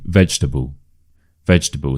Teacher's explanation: The stress is on the veg